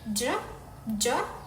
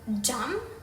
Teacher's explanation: J, j, as in jam. This sound starts as stop, like d, with the tongue touching the alveolar ridge to block the air. It then transitions into a voiced fricative like j, the j sound as in measure. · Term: affricates